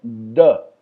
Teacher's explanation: Esse é o D de dado com a língua tocando no céu da boca. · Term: cerebral